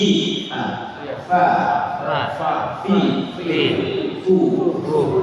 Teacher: Wa min ba'dhi syafat fal fa ma'a tawafif tsanayal musyrifat. Dan dari ba'dhi syafat perut bibir bawah falfa bersentuhan dengan ujung gigi seri atas keluar huruf fa.